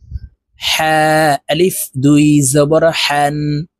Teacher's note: হা হরফ হলকের মধ্যখান থেকে উচ্চারণ হবে কারণ হার মাখরাজ হলকের মধ্যখান থেকে হবে হা আলিফ দুই জবর